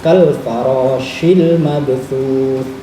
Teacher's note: diantara sifat huruf shin adalah tafashi, di mana yang namanya abab ya cara Jawa, ababnya harus berhamburan di seluruh mulut